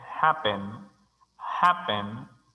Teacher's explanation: happen, happen, tiene énfasis de sonido en la primera sílaba